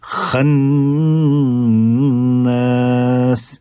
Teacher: خا بالکل حلق کے ابتدائی حصے سے, زبان کی جڑ سے